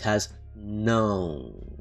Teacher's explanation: Portuguese doesn't have no. It has não. And it's very nasalized.